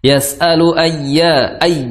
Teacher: di situ ada ya yang bertasydid, maka sedikit dihentakkan, ya, sedikit tekan. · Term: naber